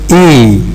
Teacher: This is E, the vowel E. E is obtained by, if you like, moving our tongue forward and raising the forward part of it. This is how we obtain E.